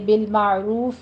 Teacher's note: عین وسط حلق سے ادا کرنا ہے